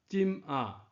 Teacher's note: 这字金有一个白读音进，四声进，四声若变调是一声